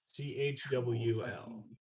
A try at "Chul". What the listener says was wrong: No, there's no W.